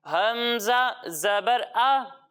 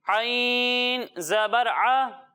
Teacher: जब हम हमजा की अदायगी करेंगे तो इसे हलक के निचले हिस्से से पढ़ेंगे और जब हम आइन की अदायगी करेंगे तो इसे हलक के दरमियाने हिस्से से पढ़ेंगे